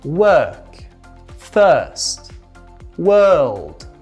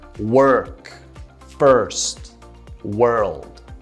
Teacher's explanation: Right, that is how you do it with an American accent. If you want to do it with a British accent, you just say without the R. That would be like saying work, first, world, which is more British, rather than work, first, world.